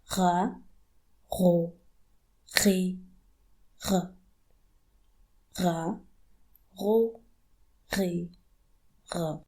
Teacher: It sounds just like the noise you make when you gargle. And it is also a throaty sound. It comes from the top of your throat. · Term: Ghayn